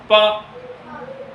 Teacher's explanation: हमारे होठों से आपके श्वास की वायु टकराएगी और वहां से ध्वनि निकलेगी। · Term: प वर्ग